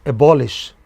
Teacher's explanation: A three-syllable verb abolish the stress is on the pre-final.